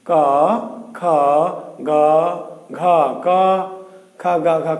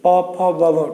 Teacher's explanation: ক, খ, গ, ঘ, ক, খ, গ, ঘ কণ্ঠ থেকে। প, ফ, ব, ভ ঠোঁট থেকে।